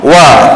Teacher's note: kalau kita sebut wa bunyi dia lebih kasar ataupun keras sikit tebal